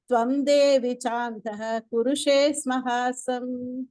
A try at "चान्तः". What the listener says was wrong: சாந்தஹ சொல்ல வேணாம். சாந்தஹ் ஹெச் ஒரே ஒரு இது போட்டவங்க ஹ வேண்டாம். சாந்தஹ் ஹ வேண்டாம்.